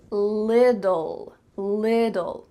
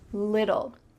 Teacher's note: You see there's 2 T's in the middle of this word, but really in American English, those T's are going to become D sounds. So it's going to sound like lidl, little, like a lid that you put on a container, little.